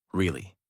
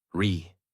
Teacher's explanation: Voice rises and falls. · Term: Natural American tone